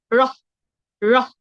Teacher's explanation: আমরা প্রথমে র বলে হ বলে ছেড়ে দিব রহ রহ কারণ র হলো অল্প প্রাণ ধ্বনি অল্পপ্রাণ ধ্বনির উচ্চারণের